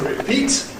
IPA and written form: rɪˈpiːt (repeat)